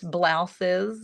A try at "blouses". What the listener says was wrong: Blouses? Is that how you pronounce it? You accentuate the S, blouse?